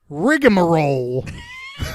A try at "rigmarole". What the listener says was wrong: there's not an extra syllable it's rigmarole